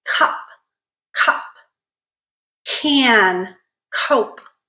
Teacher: the first sound we're gonna review is so what's happening is the tongue is going up to create constriction in the back of our mouth so the soft palate and the back of the tongue are creating that constriction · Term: Velar sounds